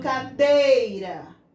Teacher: o ih fica mais suave mais quietinho lá no canto dele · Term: semivogal